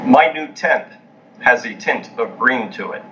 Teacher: you don't have the merger you pronounce these two sounds separately